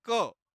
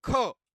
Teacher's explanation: कहते महाप्राण तो इस टेबल में हम देखेंगे आप बोलेंगे क क को बोलने से हमारे जो अंदर से कम हवा निकल है और ख यह बोलने से अधिक निकलती है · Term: अल्प प्राण